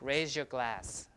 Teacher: So Z plus Y becomes that zh sound, raise your glass, like that.